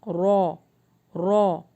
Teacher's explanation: جب آپ بولیں گے تو آپ کی زبان میں وائبریشن آپ کو فیل ہوگی